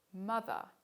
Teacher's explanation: air is briefly prevented from escaping out the mouth but it continuously goes out through the nose because the velum is lowered · the full name of this sound at the beginning of mother is a voiced bilabial nasal